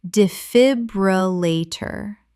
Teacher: Five syllables. The stress is on the second syllable.